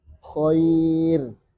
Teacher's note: Maka pastikan dia tipis. Karena ya sukun mewakili kasroh juga.